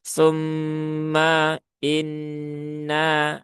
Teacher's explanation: Ketika hamzahnya ingin diperjelas, efeknya jadi memanjangkan mim menjadi tumma inna.